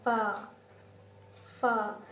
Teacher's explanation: اوپر والے جو دانت کے نوک ہوتے ہیں وہ نیچے والے ہونٹ کے گیلے والے حصے پر لگ کر ادا ہوتے ہیں